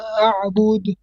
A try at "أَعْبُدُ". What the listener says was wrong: No, you're stretching the ba again. Bud. So bu is short. Bud, not bud.